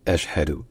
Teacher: Déjà, faut retenir que ça commence par un coup de glotte, par une attaque, par une légère constriction de la gorge. Ashhadu. Et surtout qu'il y a un ch suivi d'un h.